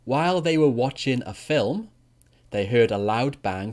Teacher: the intonation when we use the past continuous for an interrupted action actually goes down twice. So it goes down twice before the comma and then before the last section.